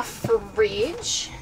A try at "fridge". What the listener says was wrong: I always do that. I always say fridge, like two syllables.